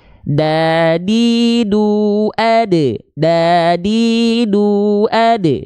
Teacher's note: Ini ujung lidah kita disentuhkan bukan ke gigi seri atas kita, tapi ke bagian pangkalnya, ke bagian gusinya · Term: huruf dal